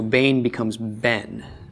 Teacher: So in the case of Bain, which means son, when this is put in the construct state, the tsera shortens to form a segul. Okay, it goes from a, which is a long vowel, to which is a short vowel.